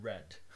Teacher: this is the r in english it's a voiced alveolar approximant red for example